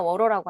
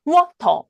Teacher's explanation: 바로 앞에 모음에 강세가 있고 뒤에 강세가 없을 때는 르 발음이 된다는 거예요. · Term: 플랩 사운드